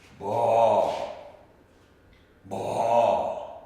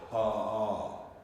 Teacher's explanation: Where B is a voiced letter. Pa is an unvoiced letter.